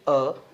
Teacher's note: जैसे ही हम अ की ध्वनि को उच्चारित करते हैं, बोलने का प्रयास करते हैं, तो आप देखेंगे कि कंठ के पास दबाव पड़ता है